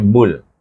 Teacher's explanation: suku kata Bu itu kita kena idram Syamsi dengan lam jadi bunyinya Bul